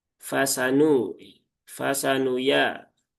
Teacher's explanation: Sin juga sudah semuanya tipis ya. Nunnya juga tipis.